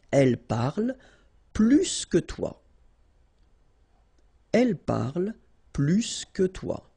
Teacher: if you want to compare with a verb, then in that case, remember, plus will be with the S. So pronounce it plus que